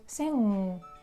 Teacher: However, with the word sing, you don't touch your upper teeth and you kind of like block your throat, and the sound should go through the nose because this sound is called nasal sound